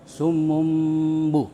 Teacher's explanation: mulut ditutup dengan merapatkan dua bibir serta mendengung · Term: iqlab